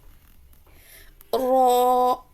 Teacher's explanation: زبان کی پشت والا کنارہ اوپر کے دانتوں کے مسوڑوں سے لگے تو رو ادا ہوتا ہے